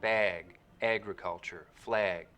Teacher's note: you'll also start to get raising and tensing in the trap vowel when it comes right before a g sound